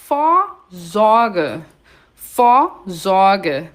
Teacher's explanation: O V em alemão tem som de F, por isso que eu digo Vor, não Vor.